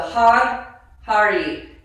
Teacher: Your tongue should hit the roof of your mouth, the Har, Hari. Your tongue needs to hit the roof of the mouth on the Har, and it's almost like a Har, Har.